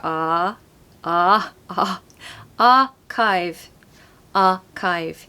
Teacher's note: if you want a British accent don't pronounce the r because it comes after a vowel